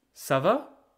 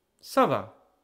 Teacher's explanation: Going up for the question, going down for the answer.